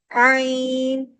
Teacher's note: عین پڑھتے ہوئے ہمارے حلق کا درمیان سے چپکتا ہے،